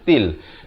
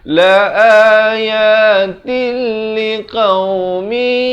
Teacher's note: Asalnya tin, asalnya ta tanwin di bawah bunyi tin. Tapi bila datang lam, hukumnya masuk tanpa dengung. Jadi baca til. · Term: idgham bila gunnah